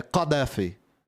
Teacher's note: Você fala a letra G, tipo de gato, e aí você pronuncia a letra K usando a parte da sua garganta que você usa pra falar a letra G